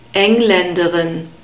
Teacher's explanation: Here we have the stress on the first syllable